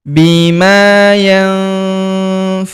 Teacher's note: Bertemu huruf fa maka nun sukunnya melebur ke huruf fa. Kita baca dengung dan samar. Dengungnya kita tahan dua sampai harakat.